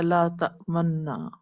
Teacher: روایت حفص میں ایک کلمے میں ایسا ہوتا ہے کہ پڑھ فتح رہے ہوتے ہیں، زبر پڑھ رہے ہوتے ہیں، لیکن ہونٹوں کی شکل جو ہوتی ہے وہ ضمہ والی ہوتی ہے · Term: اشمام